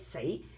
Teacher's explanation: Say is tone 2, also a rising tone with a higher pitch.